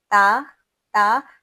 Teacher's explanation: जुबान बिल्कुल सीधी है। ऊपर की तरफ नहीं उठ रही।